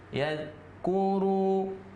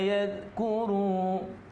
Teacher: ra itu berharkat dhammah diikuti oleh waw yang bersukun, maka dia dibaca 2 harkat juga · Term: mat tabi'i